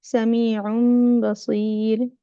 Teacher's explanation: So you don't pronounce a noon, you do the meme with the ikhfa. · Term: iqlab